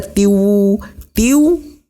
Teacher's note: hukum bacaannya adalah Idgham Bighunnah cara membacanya yaitu ditahan dengan memakai dengung kehidung